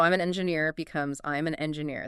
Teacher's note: The N attaches right to the E.